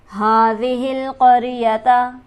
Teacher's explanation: ہاں پر ہمارے پاس کھڑی حرکت موجود ہے, اسے ہم کھینچیں گے ایک الف کے برابر